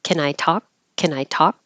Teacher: Can will always shorten to just kin.